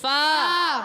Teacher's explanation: فا کا مخرج ہے اوپر والی دانتوں کے کنارے، جب نیچے والے ہونٹ کے تر حصے سے لگتے ہیں تو ادا ہوتا ہے